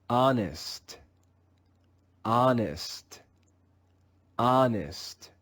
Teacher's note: In some words, the English letter H is also silent. The second sound made by the English letter H again is no sound at all. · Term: silent H